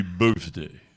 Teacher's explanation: All right, you got TH in the middle there, right? But it makes a F sound.